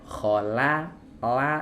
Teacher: Dan hati-hati saat kita mengucapkan huruf lam itu, kita mesti menyertakan bagian tepi lidah atau sisi lidah bagian depan